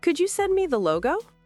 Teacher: When we make a polite request, our voice goes up at the end. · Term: Rising intonation